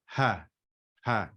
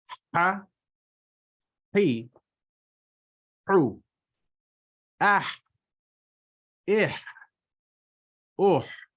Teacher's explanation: It is a sharp H that the occlusion or the place in which you have an obstruction occurs in the top back of the throat.